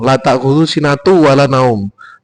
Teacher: tanwin bertemu wawu kan idgham bihuna